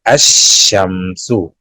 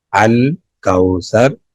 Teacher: الف لام کے بعد مشدد حرف ہے تو لام کی آواز داخل ہو گئی، لام کی آواز نہیں آئے گی